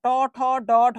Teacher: মানে হচ্ছে মূর্ধা থেকে উচ্চারিত হচ্ছে তাই এটা মূর্ধন্য ধ্বনি